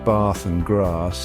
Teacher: the AA sound in words like bath and grass is typically pronounced further back in the mouth than in American English